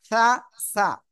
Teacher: নরম আওয়াজে জিহ্বার আগায় এই উপরে দুই দাঁতের আগায় লাগবে